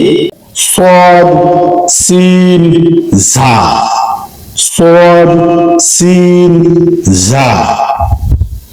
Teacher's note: 12 নম্বর মাখরাজ, জিহ্বার অগ্রভাগ সামনের নিচের 2 দাঁতের পেটের সাথে লাগিয়ে